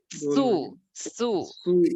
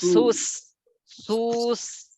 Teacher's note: সিনের পেশের কারণে কি হয়ে যাচ্ছে, ঠোঁট গোল হচ্ছে। তো সিন মুখ পাশ রেখে চিকন আওয়াজ করতে হয় এরকম।